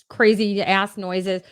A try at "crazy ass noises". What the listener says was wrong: Did you say crazy ass noises? You put the emphasis on the wrong syllable.